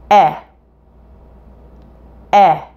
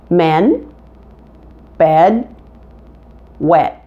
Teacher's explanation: the short e is a front vowel meaning that the front of your tongue is touching the inside of your bottom front teeth